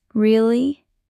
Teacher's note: Use rising tone for surprise.